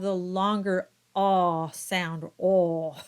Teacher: the longer ah sound, oh, which is very dark and rarely used in French. So it's not really going to be an issue here.